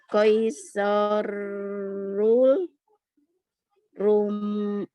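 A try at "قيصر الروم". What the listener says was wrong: Ada alnya, al samsiyah.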